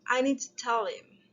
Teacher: to tell him if we use it in casual speech we we usually omit the h sounds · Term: elision